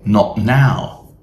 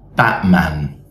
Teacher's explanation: ending with a T followed by another word starting with a consonant, it's very common to glottalize the T sound